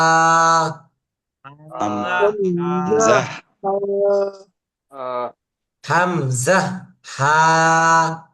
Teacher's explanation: হলকের শুরু হইতে উচ্চারিত হয় হামজা